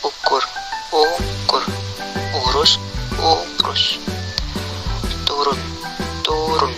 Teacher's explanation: Vokal U. Vokal belakang, tinggi bawah, bundar, tertutup.